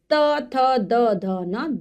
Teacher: तवर्ग, ये दंत से इनका उच्चारण होता है, यानी कि हमारी जो जीभ है वो दांतों को छूती है, इसलिए इनको दंत्य कहा जाता है। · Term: दंत्य व्यंजन